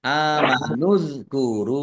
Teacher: dalal sukun bukan qalqalah jangan dipantulkan